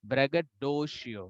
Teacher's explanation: there are 5 syllables here, and the high pitch will go to do. किसी ने बोला डो को silent कर दो, लेकिन दो तो साइलेंट होगा तो कैसे चलेगा, वो तो उसमें तो हाई पिच डालना है, उसको और जोर से बोलना है हमको, that can not be silent.